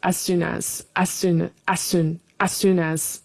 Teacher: The first as in fast speech is sometimes hidden. Yeah. like as soon as as soon you kind of hear the vowel but not it's not so pronounced as soon as.